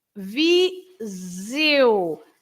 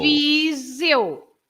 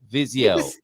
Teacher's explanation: So it's Viseu. The S between the two vowels, the I and the E, becomes a Z sound